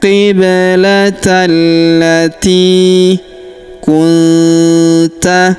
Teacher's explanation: huruf ti kita panjangkan dua harakat karena ya sukun di depannya.